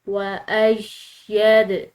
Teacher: تو ایسی صورت میں فیل ہوتا ہے کہ جیسے کہ مشدد حرف پر پریشر اور دباؤ ہے. وَأَيَّدْ، دال حروف قلقلہ میں سے آ رہا ہے تو اس کو ہم نے ہلا کر ادا کرنا ہے